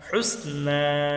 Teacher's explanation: এখানে নুনে এক আলিফ টান হবে খাড়া জবরের কারণে